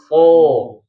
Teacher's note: Tadi di awal sudah saya sampaikan. Jadi yang dimaksud dengan isti'la itu pangkal lidahnya naik. Pangkal lidah naik itu seperti pengucapan lafal huruf qaf ya, o.